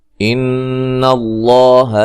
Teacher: یہاں نون مشدد پہ غنہ ضروری ہے